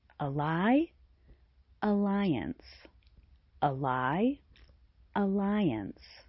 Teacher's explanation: The second syllable of alliance sounds like lie. It uses the long i sound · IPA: aɪ